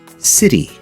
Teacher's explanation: a normal D sound is heavier than the sound of the flap T